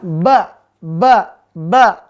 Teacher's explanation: Ada udara yang keluar? Ternyata udaranya tertahan. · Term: udara tertahan